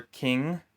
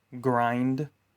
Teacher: The air should stop for a moment before being released. K is a voiceless sound. G is voiced.